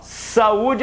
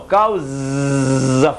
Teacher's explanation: saúde é surdo, não vibra nada. Mas em compensação, causa, fonema sonoro